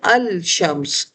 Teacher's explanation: لام پر چونکہ کوئی حرکت نہیں ہے تو اب حمزہ وصل ڈائریکٹ اس مشدد حرف سے جا کر ملے گا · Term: حروف شمسی